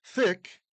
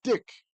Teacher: a th becomes a D in German thick in English is dick in German